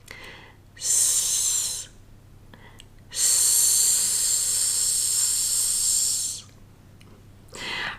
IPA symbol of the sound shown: s